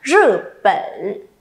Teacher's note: Lưu ý âm này không bật hơi nhá, đừng có phẩn ở đây là sai đấy, được chưa nhỉ?